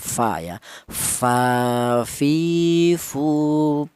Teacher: huruf fa ini keluarnya huruf yaitu berasal dari bibir bawah bagian dalam menyentuh ujung gigi seri atas